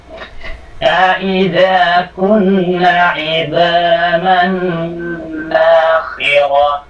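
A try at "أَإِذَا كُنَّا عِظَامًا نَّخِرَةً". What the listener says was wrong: Bakit mahaba yung na sa nakhira? Nakhira. Huwag mong pahabain yung na sa nakhira.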